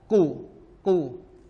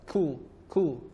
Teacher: Huruf qaf ada bunyi isti'la, ku, ku. Sedangkan huruf kaf ada bunyi hamas, ku, ku.